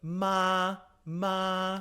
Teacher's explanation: The first tone is a mid flat level tone, and there's no symbol for it. This is what you'll use when a word is naked, and it's pronounced like ma ma.